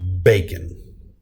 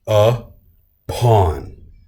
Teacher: The stressed, the strength of that word comes on the forefront. So all of the power of that word is at the very front. Bacon. Okay, bacon.